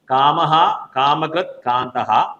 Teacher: വിസർഗ്ഗത്തിനു ശേഷം വീണ്ടും ക വരികയാണ് അപ്പോൾ നാം ഇഹ്ക ആയി മാറും അവിടെ ഒരു ഹ എന്ന് പറയുന്ന ഒരു ശബ്ദം നാം ചേർത്തുകൊണ്ട് വേണം ക ഉച്ചരിക്കേണ്ടത്